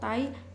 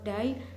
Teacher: The consonant sounds are made when the tongue tip contacts the alveolar ridge, the gums just behind the teeth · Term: alveolar sound